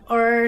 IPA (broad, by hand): ɘr